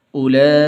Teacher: اس بڑی مد کو 5 الف کے برابر لمبا کرتے ہیں